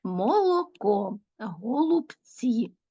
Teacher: голосний о вимовляють чітко як в наголошеній так і в ненаголошеній позиції